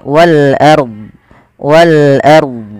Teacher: alif lam qamariyah sebagaimana yang di sini yaitu suara lamnya dibaca dengan jelas · yaitu suara lamnya dibaca dengan jelas kemudian pfal RO di sini rnya kita baca dengan bacaan ro tafkhim ro tafkhim ro tafkhim yaitu rnya dibaca dengan tebal · Ro tafkhim. Ro tafkhim, yaitu ro-nya dibaca dengan tebal